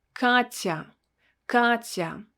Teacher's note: we will need to pronounce a sound ah with a softened consonant